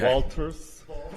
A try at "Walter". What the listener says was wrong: There's no S. No.